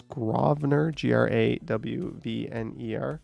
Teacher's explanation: In Toronto, the street named Grosvenor is pronounced Grosvenor with the emphasis on the first syllable